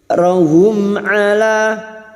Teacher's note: Mim sukun dibaca dengan jelas tanpa bersenandung. Hum' ala. 'Ala, alif kecil di atas, dua hitungan untuk mad thabi'i. · Awzarahum, mim sukun ketemu 'ain, idhar syafawi. Mim sukun dibaca dengan jelas tanpa bersenandung.